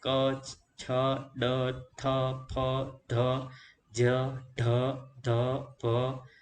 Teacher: જે વ્યંજનોનો ઉચ્ચારણ કરતી વખતે વધુ હવા કે પ્રાણવાયુની જરૂર પડે તેવા વ્યંજનોને મહાપ્રાણ વ્યંજન તરીકે ઓળખવામાં આવે છે